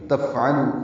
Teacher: فا ساکن پہ ہمس ہے، لو واو مدہ ہے